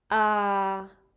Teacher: that's middle pitch, and well, you kind of sound like a robot